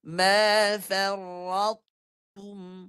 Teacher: Dia hanya ambil huruf ta yang tebal tu, bunyi dia separuh je. Kenapa? Sebab dia punya kategori dia idgham naqis.